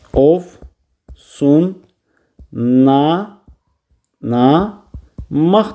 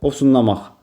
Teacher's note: Bizim əlimizdə L samiti yoxdur. L N ilə əvəz olundu